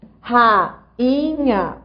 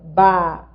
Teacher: a gramática diz que quando há o NH na sequência, esse NH nasaliza o I